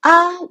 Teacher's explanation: with the first tone is a high pitched sound also a flat tone